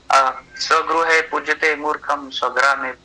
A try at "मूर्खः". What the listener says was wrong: मूर्खम क्यों बोला? जब मूर्ख लिखा है तो विसर्ग लगाया है और खुद ही लगाया है।